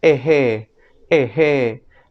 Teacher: la J en fonética se le conoce como fricativa glotal sorda